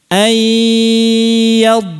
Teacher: yang tersisa, yang tidak dihilangkan dari nun itu adalah gunnah, makanya idghamnya nakis namanya.